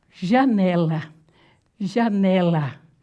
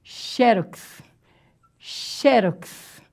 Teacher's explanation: Paroxítona, gente, é a maioria das palavras na língua portuguesa. São palavras paroxítonas, ou seja, a sílaba tônica aparece na penúltima, na segundinha de lá para cá.